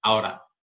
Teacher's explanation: o out você vai ter o flat T aqui. Então, esse T vai ter uma pronúncia mais chapada.